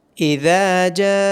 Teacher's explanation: ذال کو نرمی کے ساتھ ادا کیا جائے گا اور ذال کے بعد الف مدہ ہونے کی وجہ سے ذال کو لمبا کیا جائے گا۔